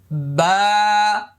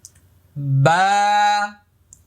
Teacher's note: বা এক আলিফ পরিমাণ লম্বা হবে, মুখটা খালি ফাঁকা হবে।